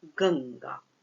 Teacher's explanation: तो ये अपदांत अनुस्वार है और इसके बाद ये ग आ रहा है, मतलब कवर्ग का ही ये वर्ण आ रहा है ग, इसलिए पर सवर्ण अनुस्वार होगा ङ, और इस ग के आने की वजह से इस अनुस्वार की जगह पर हो जाएगा ङ